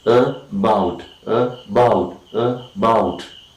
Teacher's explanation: the second syllable is articulated with more force, and we say that this syllable is more important than the first syllable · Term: primary stress